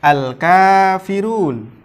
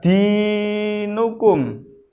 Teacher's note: maka dibaca dua harokat yang disebut dengan mad tabi'i